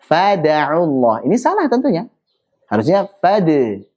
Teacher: suara Qalqalah itu lebih dekat ke fathah perhatikan bukan fathah tapi lebih dekat ke fathah